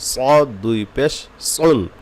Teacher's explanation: সদ যদি মোটা না করে তাহলে কিন্তু সিন হয়ে যাবে